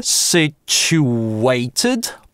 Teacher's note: Situated это linking [w]. Слово это можно произнести через ch, sit-chew-waited, палатализованный вариант, а можно situated более классический RP вариант.